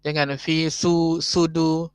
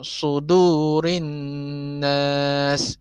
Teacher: Sod ni dia tebal Jangan kita samakan sod ni dengan sin.